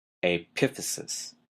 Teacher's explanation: notice the stress is in an odd place, the second syllable